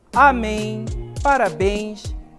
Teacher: isso recebem acento aí por serem oxítonas certo a última sílaba a sílaba tônica está na última sílaba